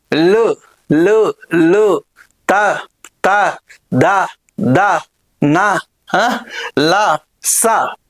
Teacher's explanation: ఇవి దంతాల ద్వారా ఉత్పత్తి అవుతున్నాయి కాబట్టి వీటికి దంత్యాలు అనేటువంటి పేరు అనేటువంటిది రావడం జరిగింది. ఓకేనా రైట్ అండి